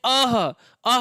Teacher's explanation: जब हम बोलते हैं अः अः बोलने में अंत में क्या उच्चारित होता है? ह उच्चारित होता है।